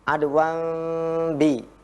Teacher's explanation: huruf kita suaranya ada di huruf nun, namun makhrajnya atau bibir kita sudah memulai di huruf ba. Adwam bi. Nah, jadi orang terdengarnya itu seperti mim. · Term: iqlab